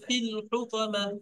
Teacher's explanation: ফি টান হবে না, এই লামের উপরে সাকিন থাকার কারণে